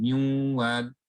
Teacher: So the sound is actually the Ghunna. It's not the Nun.